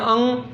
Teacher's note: अंग का जब करते हैं अंग तो आवाज़ कहाँ से निकलती है, नाक से निकलती है। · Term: नासिका